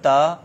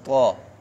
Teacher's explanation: تا کو باریک پڑھیں گے, طا حروف مستعلیہ میں سے پر کر کے پڑھیں گے. اور اسی طرح ذال اور ضا, ذال نرم حروف میں سے ہے اور ضا حروف مستعلیہ میں سے ہے.